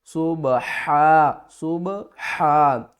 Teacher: حا کو ہم نے حلق کے درمیان والے حصے سے ادا کرنا ہے، اور آواز جو ہے نا وہ باریک آئے گی